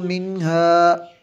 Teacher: یہاں پہ ہم نے غنہ نہیں کیا، کیوں کہ نون ساکن کے بعد ہا حروف حلقی میں سے